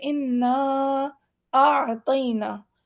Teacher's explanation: 3 سے 4 الف کی مقدار یا 3 سے 4 سیکنڈ لمبا کر کے پڑھتے ہیں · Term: مد منفصل